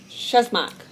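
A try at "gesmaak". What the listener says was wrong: Geshmack. It's got a G.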